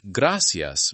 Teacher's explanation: In parts of Spain, gracias may have a soft th sound. Across much of Latin America, it sounds closer to gracias.